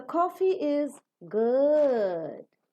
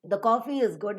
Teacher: you talk at a particular pitch you fall down and then you rise up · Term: falling Rising tone